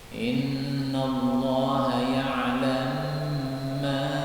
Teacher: Innallaha ya'lam ma idgham. Jadi mim yang pertama dimasukkan pada mim yang kedua, boleh.